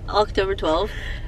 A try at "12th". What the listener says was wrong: No, it's not 12. It's 12th. It's happy October 12th.